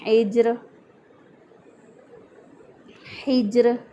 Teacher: اب یہاں پہ جیم ساکن پر قلقلہ ہے اور ہا کو وسط حلق سے ادا کیا، اور را جو ہے وقف کی صورت میں ساکن ہو جائے گا۔